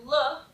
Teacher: look is dental alveolar because you're still putting your tongue in the back of your teeth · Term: lateral approximant